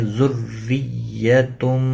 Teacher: تنوین کے بعد حروف اخفا کا حرف آیا ہے، اخفا حقیقی ہوگا